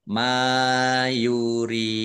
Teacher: Mim fathah alif mad thobi'i. Panjang dua harakat.